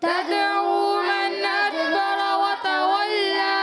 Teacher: دال حرف قلقلہ میں سے ساکن ہے، قلقلہ ہوگا آواز لوٹ کر آئے گی